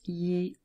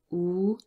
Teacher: E is produced at the front, but oo is really produced more at the back of our throat